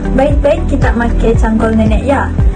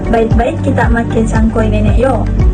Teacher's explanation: Terdapat perbezaan pada suku kata kedua bagi perkataan cangkul bagi dua variasi ini, kerana dialek Melayu Kuching akan mengekalkan bunyi bagi perkataan yang diakhiri dengan konsonan l, manakala dalam dialek Melayu Kabong akan menjadikan diftong oi pada perkataan yang diakhiri dengan konsonan l